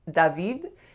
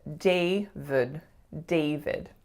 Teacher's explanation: So a lot of my clients see the letter A, so they tend to make more of a sound. And for the second syllable, they see the letter I, but it is in fact a schwa.